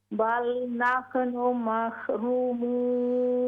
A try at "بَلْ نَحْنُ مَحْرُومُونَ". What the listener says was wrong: ہاں جی ہا باؤنس نہیں ہونی چاہیے، اس پہ کلکلا نہیں ہے. بل نحن محرومون.